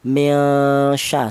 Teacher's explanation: Ikhfa itu artinya samar. Yaitu cara bacanya nun mati ini disamarkan